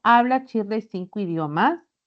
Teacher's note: mi tono va a ser descendente